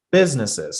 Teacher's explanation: So putting the stress on the first syllable.